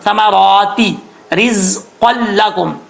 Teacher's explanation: را کے نیچے زیر ہے، را بریک پڑھا جائے گا